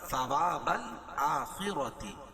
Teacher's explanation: خا کو پور پڑھیں گے اور را بھی پور پڑی جائے گی